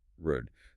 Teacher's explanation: for the English R, the tongue is kind of floating and curled back. Rude. The sound is shaped deep in the back of your mouth.